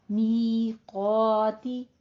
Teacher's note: मी 2 count करना है, क़ा को भी 2 काउंट करना है, लेकिन क़ाफ को पुर अलिफ पुर हो जाएगा।